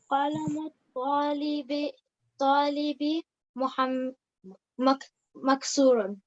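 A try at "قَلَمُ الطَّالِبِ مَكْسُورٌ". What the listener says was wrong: Ahsanti, very good.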